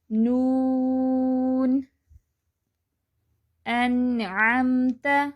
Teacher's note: لام کے مخرج سے تھوڑا نیچے نون کا مخرج ہے۔